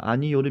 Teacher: 요는 반모음이 있고 단모음 O가 있다는 걸 알 수가 있습니다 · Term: 반모음 첨가